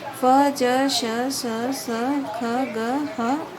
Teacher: तो यानी जब भी हम बोलेंगे तो क्या होता है, जीवा एकदम से मुख के ऊपर की ओर लगती है और तुरंत झटके के साथ ये वर्ण निकलते हैं। संघर्षी जो वर्ण संघर्ष के साथ बाहर निकलते हैं।